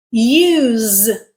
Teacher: When we pronounce it with a z sound, which is voiced, it becomes a verb.